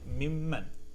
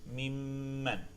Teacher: So هذا mimman, for example, min and man, you would pronounce it mimman. There's no noon, and you would give it the ghunna